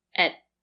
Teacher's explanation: At is usually not stressed. So, the sound is more closed.